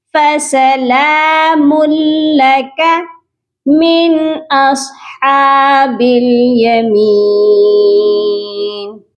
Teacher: فَسَلَامٌ میم لام دو پیش مل، یہاں پر غنہ نہیں ہوگا بلکہ میم کو لام مشدد کے ساتھ سختی سے ملائیں گے